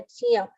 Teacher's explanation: jna is the proper correct Sanskrit form of pronunciation, which is made up of j and nya together